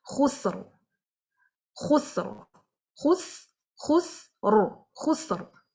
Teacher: Sin is light, Ra is Sakin, so that will make the Ra heavy as well.